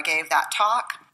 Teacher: when she says that talk the T disappears